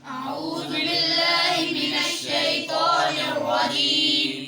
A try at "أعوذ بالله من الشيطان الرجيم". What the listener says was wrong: آپ کے بھائی اعوذ پہ سیٹی آتی ہے دال پہ. اعوذ باللہ من الشیطان الرجیم.